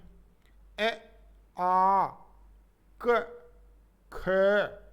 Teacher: इन वर्णों के उच्चारण में जीवा यानी जीभ कंठ का स्पर्श करती है